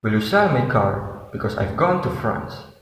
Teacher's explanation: the four keywords sell, car, gone, France are accentuated or stressed.